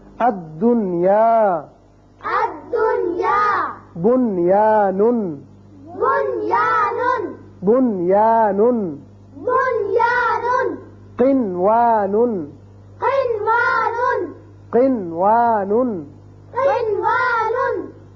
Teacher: قرآن پاک میں جہاں بھی یہ چاروں آئیں گے وہاں نون پر اظہار ہوگا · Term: اظہار مطلق